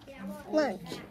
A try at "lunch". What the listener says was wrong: I think the first time you said lunge. Okay, you accidentally stuck an N in there.